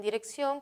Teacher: la tilde en la dirección también colocamos tilde en dirección porque la última sílaba ción es la más intensa es la que tiene el acento es aguda por lo tanto y lleva tilde porque terminen en